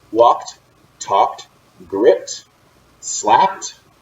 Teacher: They all end with ed, but we pronounce it with a T. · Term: T sound